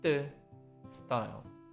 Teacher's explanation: The pronunciation of 쌍디귿, the sound is similar to the T sound after S in English. Due to S, you can block some air and forcefully pronounce the sound.